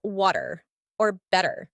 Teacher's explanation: in American English the T sound often becomes a flap sounding more like a soft D in words like water or better